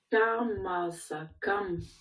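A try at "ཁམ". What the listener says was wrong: Ouais, et un petit peu plus expiré serait bien.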